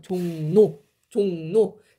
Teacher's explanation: 종로라고 발음이 안 되고 종노라고 발음이 돼요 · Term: 비음화